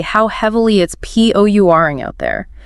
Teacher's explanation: You elongate the or sound. It mimics the continuous action of the rain.